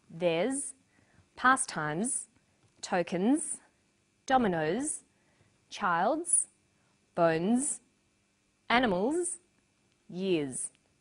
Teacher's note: the final s is pronounced z